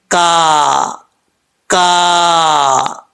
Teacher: जुबान की जड़ ऊपर वाले तालू के सख्त हिस्से से लगे तो यह काफ पढ़ा जाता है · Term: बारीक काफ